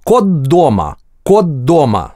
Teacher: звучат одинаково, как двойное д, потому что звонкий согласный в русском озвончает предыдущий глухой